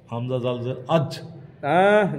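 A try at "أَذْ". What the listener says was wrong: জিমের উচ্চারণ করে লাইছেন নরম করে। হামজা জাল জবর আজ। আজ কেন? কলকলা এটা জিম হতো না, এটা জাল। এই যে দেখেন জালের উচ্চারণ জিহিবার আঘাত দুই দাঁতের আঘাত সঙ্গে লাগায়। এই দেখেন জাল জাল।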